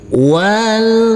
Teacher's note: huruf wau langsung masuk ke huruf lam huruf alifnya kita anggap tidak ada walmun huruf nun harus kita baca dengan terang atau jelas karena